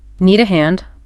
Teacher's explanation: use that rising intonation to make it sound like a question